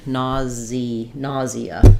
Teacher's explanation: we would say it with a z, nausea. So that sounds more like 3 syllables.